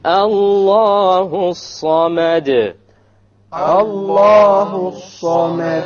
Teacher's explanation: It's a solar letter. The sad is a solar letter, which means we drop the lam when we have the alif lam there.